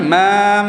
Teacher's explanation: Ada yang baca mim yang mati belakang dimatikan dan didengungkan, bukan panggil dengung yang panjang tapi yang sedikit. Nak membezakan dengan huruf yang tidak ada, yang mana makhrajnya mesti ada bunyi ikut hidung.